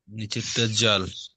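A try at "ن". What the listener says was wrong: জাল নয়, নিচেরটা নুন। এই দেখেন, এইটার দিকে তাকান, বুঝতে পারবেন এগুলো নুন, জাল নয়।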